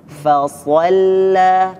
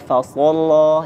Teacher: fanya tipis, sotnya tebal